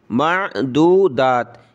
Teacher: ٹھیک ہے, دال واو پیش دو, دال کھڑا زبر دا, تا دو زیر تن, دو داتن وقفن معدودات. یہ بڑی تا جو ہے وقف میں ہا نہیں بنتی